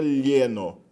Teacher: o encontro consonantal inicial clá, plá, ele acaba evoluindo no espanhol para um som que originalmente era um L palatalizado